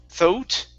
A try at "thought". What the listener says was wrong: Yeah, so no oo sound there. So only an ah. So it's one vowel sound.